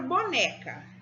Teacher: A palavra boneca, a sílaba tônica é né, e ela é a penúltima sílaba.